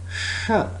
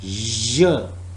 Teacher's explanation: The next is sh. It is voiceless. J. It is voiced.